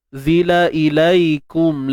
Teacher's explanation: Untuk zai ni tak perlu keluar hujung lidah. Lidah duduk dalam, ya, duduk dalam.